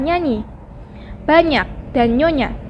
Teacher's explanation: 21. Fonem NY dilafalkan dengan cara mula-mula menempatkan daun lidah pada langit-langit keras. Lalu udara dihembuskan keluar melalui rongga hidung.